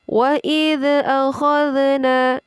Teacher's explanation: Jadi ini mutlak huruf dzal sukun tidak boleh dipantulkan.